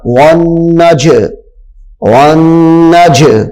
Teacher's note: یہاں پہ جیم چونکہ حروف قلقلہ میں سے ہے تو اس کو ہم خوب ظاہر کر کے پڑھیں گے، جیم ساکن بھی ہے حروف قلقلہ بھی ہے، تو یہ بن جائے گا ون نج، ون نج۔